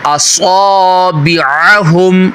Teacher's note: صاد healthy کر کے پڑھیں گے، سٹی بھی نکلے گی